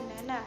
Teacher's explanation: Yang keempat E, ciri-ciri agak rendah depan tak bulat, contoh kata nena.